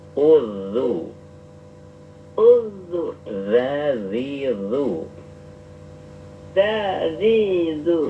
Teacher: Ujung lidah bertemu dengan ujung gigi seri ya, ujung gigi seri. Coba dipraktekkan dalam huruf sukun. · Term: sifat rokhawah